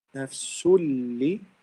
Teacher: The lam and the ram both result in إدغام كامل because we don't read the noon or we don't use the غنة of the noon or tanween at all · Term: إدغام without غنة